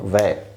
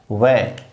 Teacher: तो बराबर ये दंत और ओष्ठ से मिलकर निकलने वाला वर्ण हो गया है आपका वै। ये वै वर्ण दंत और ओष्ठ से मिलकर निकलता है। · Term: दंतोष्ठ